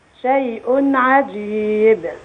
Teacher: نخلي بالنا من الإظهار الحلقي شيء ع كتاب ح